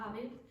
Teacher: she still made mistake with habit, the last word in the first line because she didn't pronounce the t a typical Spanish speaking mistake.